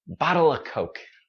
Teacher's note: So this of, we get rid of that sound and just say a schwa sound.